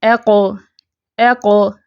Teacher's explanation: بھری ہوئی آواز نہیں ہوتی، موٹی تو ہوگی لیکن کھلی ہوئی آواز ہوگی، منہ بھر کے ہم اسے ادا نہیں کریں گے. ساکن حالت میں قاف جو ہے اس کی آواز اچھلتی ہے، ٹھیک ہے، قلقلہ کی وجہ سے. قاف کی ادائیگی میں ہونٹوں کو گول نہیں کیا جائے گا، ٹھیک ہے.